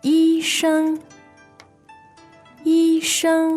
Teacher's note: that sounds like two first tones